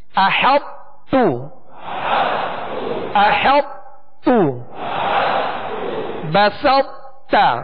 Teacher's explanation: بلکہ طا کو جب تا میں ملائیں گے تو طا کی صفت جو خوبی ہے پر ہونا وہ باقی رہے گی، وہ باقی رہے گی، مگر آخر میں جب متحرک تا حرف پڑھیں گے تو اس کو باریک کر دیں گے. · جب طا کو تا میں داخل کریں گے تو اس کا ایک حصہ، وہ پر ہونے کا جو حصہ ہے، جو پر ہونے کی جو خوبی ہے وہ باقی رہ جائے گی